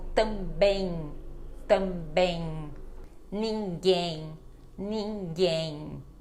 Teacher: quando ela tá no final de palavra não é para fechar a boca ela fica com som de n · então eu não fecho a boca e ela fica com este som de n e não de m mais mas somente nesses casos quando ela está final de palavra